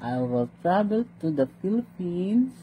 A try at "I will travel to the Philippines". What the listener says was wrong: Again, your intonation. I will travel to the Philippines.